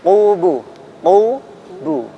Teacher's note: perhatikan huruf qaf. Qubu, qubu. Ya, bukan kaf, qubu ya. Jadi ditebalkan